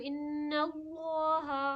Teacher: okay جب لام کو ہم پڑھتے ہیں تو لام یہ سامنے والی جو زبان کی نوک ہوتی ہے، زبان کا آگے کا حصہ ہوتا ہے، نوک میں بولتی بٹ زبان کا جو ہمارا آگے کا حصہ ہوتا ہے وہ سامنے کی دانت، اوپر کی جو دانت ہوتی ہے اس کے جڑوں میں ٹچ کرتی ہے